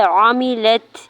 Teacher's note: تا ساکن پہ حمز کریں گے